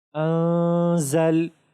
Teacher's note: نون ساکن کو اخفا کے ساتھ بھی پڑھیں گے اور غنہ بھی کریں گے